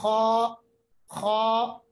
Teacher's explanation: आप देखिए, आपकी जो आवाज है ना वो भारी होगी और आपके होंठ गोल होंगे। मोटे पढ़ने का मतलब आपकी जो आवाज है वो भारी होगी और होंठ गोल होंगे। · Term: तफखीम